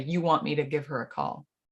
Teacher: you're also kind of taking the H away a little bit and giving us giver.